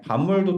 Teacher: 반물은 뒤에 미음의 영향으로 비읍이 미음으로 바뀐다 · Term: 비음화